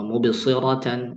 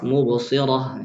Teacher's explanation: Terakhirnya itu bukan huruf tak marbutah. Karena kalau tak marbutah wakaf bukan jadi mad iwad, dia menjadi ha